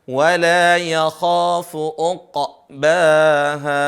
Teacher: Jadi ada ain bertemu dengan qaf dibaca qalqalah